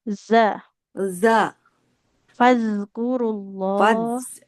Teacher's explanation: huruf dalnya, ujung lidahnya nempel ke ujung gigi sari atas